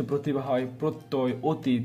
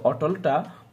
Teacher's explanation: প্রতিভা হয় প্রত্যয় অতীত এগুলো সব ও এর মত উচ্চারিত হচ্ছে কিন্তু অটলটা ও এর মত উচ্চারিত হচ্ছে না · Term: সংবৃত উচ্চারণ